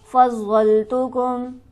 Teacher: ضاد کو ہم سختی سے ذرا رک کر پڑھیں گے تشدید کی وجہ سے